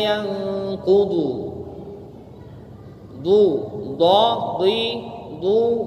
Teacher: Isti'la itu salah satu sifat huruf terangkat pangkal lidah, yaitu huruf dad di situ.